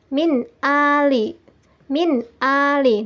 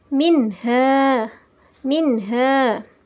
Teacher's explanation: izhar nya juga disebut dengan in her halqi cara membacanya adalah suara Nun dibaca dengan jelas dan tidak terpengaruh oleh huruf sesudahnya